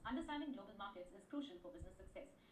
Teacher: my voice was high when I started the sentence and I lowered down my pitch the moment I ended the sentence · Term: intonation